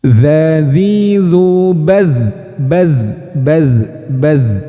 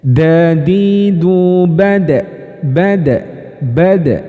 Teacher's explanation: suaranya kalau dalal itu mengalir kalau Dal itu tertahan